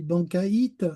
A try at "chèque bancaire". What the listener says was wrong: Non, chèque bancaire. Oui, sans le T à la fin.